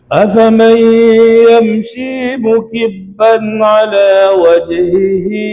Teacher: Sebab riwayat haf dia baca dengan idgham maal ghunnah dengung. Riwayat khalaf dia tak baca dengan dengung.